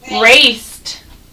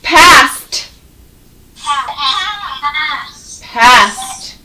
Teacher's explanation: See how it ends with a t? They're all unvoiced sounds. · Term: t ending